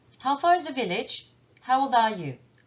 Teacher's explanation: l'intonation est descendante. Pour les questions en WH, how far, how old, what, whose, how many.